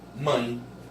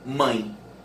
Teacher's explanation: Você abre a boca para falar o MAN. Aí quando você vai fechando a boca no meio do caminho, você fala um IN nasal, uma semivogal nasal.